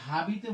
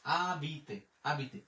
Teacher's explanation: আমার যদি কোনো শব্দে আশ থাকে, আশের উচ্চারণটা নীরব থাকে, মানে আশের আমরা উচ্চারণ করি না